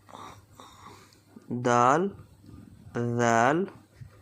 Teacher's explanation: Dal comes out from the tip of the tongue and the roots of the Upper Front Teeth